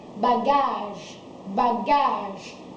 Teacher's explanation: in bagage, you stress on the second A